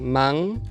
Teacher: A nasal velar que é usada no final das sílabas, como na palavra man.